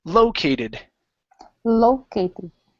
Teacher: the stress is at the beginning